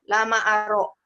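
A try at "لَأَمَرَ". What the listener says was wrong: Lama aro, lama aro. Lama aro, lama aro. Kebalik. La amaro.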